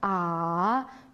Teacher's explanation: a yuqoridan tuvanga, ondan yana yuqoriga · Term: 3. ton